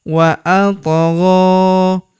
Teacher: Huruf to berharokat sukun kita pantulkan atau kita qalqalahkan. Wa atgha. Huruf gha kita panjangkan 2 harokat karena terdapat tanda alif kecil di atasnya yang ini.